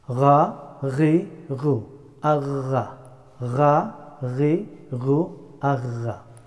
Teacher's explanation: The letter of ghain pronounced from upper part of the throat. From there, the letter of ghain pronounced.